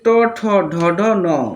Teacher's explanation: তালু আর দাঁতের মূর্ধন্য জায়গায় উচ্চারিত হয় ট ঠ ড ঢ ন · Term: মূর্ধন্য বর্ণ